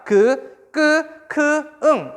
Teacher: 어디에서 발음이 되는 거냐면 혀의 뒷부분과 여린 입천장 사이에서 발음된다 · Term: 여린 입천장 소리